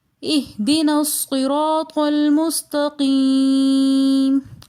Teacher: لفظ صراط میں را کے اوپر زبر آ رہا ہے، لہٰذا صراط میں را کو موٹا پڑھیں گے۔ اہدنا میں نون مفتوح کے بعد الف مدہ آ رہا ہے، لہٰذا اس کو ایک الف کی مقدار کھینچ کر پڑھیں گے، جیسے اہدنا۔